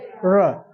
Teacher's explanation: र बोलेंगे, जीभ हमारा मुड़ेगा और ऊपर वाले को छुएगा। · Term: मूर्धा